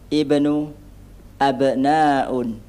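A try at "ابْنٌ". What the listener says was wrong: Ibnu, abnaun. Kurang tanwin. Di mana ya? Ibnun.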